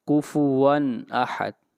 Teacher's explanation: واو کے اوپر تنوین ہے اور اس کے بعد حمزہ آ رہا ہے، اور حمزہ حروف حلقی میں سے ہے، اس لیے یہاں پر نون کو ظاہر کر کے پڑھیں گے۔ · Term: اظہار